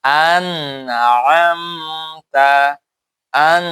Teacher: নুন সাকিনের পর আইন আছে, তাহলে কিভাবে পড়বে? যে নুন কি স্পষ্ট করে পড়বে। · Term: এজহার